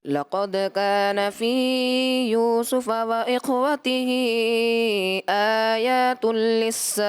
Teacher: فی یوسف میں آپ نے حرف مدہ کو زیادہ کیا، اور وہ اخواتی ہی خواہ میں اور آپ نے خواہ کو ہلا دیا، کلکلا محسوس ہوا.